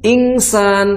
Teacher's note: Kalau ingsan itu jadinya bukan pertengahan bunyinya. Jadi akhirnya full suara dengung hidungnya, suara gunahnya itu dominan jadinya.